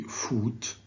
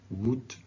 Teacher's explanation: so it's a short back vowel